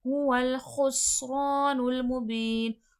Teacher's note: خس میں سختی سیٹھی کے ساتھ واضح ہوگا سین، رو میں الف مدہ کھینچ کر.